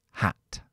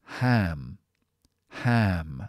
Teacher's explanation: Simplemente porque hay una consonante con voz después del sonido arrastra el sonido y hace que sea más larga